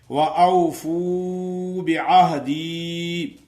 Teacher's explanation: فو کو تھوڑا سا لمبا کریں گے کیونکہ وہ مدہ ادا ہو جائے گی۔ وَأَوْفُوا بِعَهْدِي، اوفی اوفے نہیں کرنا، کیوں کہ فے کریں گے تو حرف مجہول ہی ادا ہوتا ہے۔